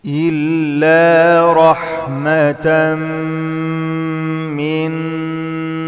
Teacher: تنوين بعد ميم إدغام مع الغنة حركتين